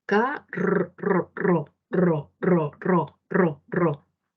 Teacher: El aire sale ahí, ahí. Por eso es vibrante, la lengua vibra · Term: vibrante múltiple